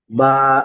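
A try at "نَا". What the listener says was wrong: টান দেন। বা, নুন, আলিফ জাবার না, এটি বা নয়, নুন। বা হলে নিচে একটি নোক্তা হবে।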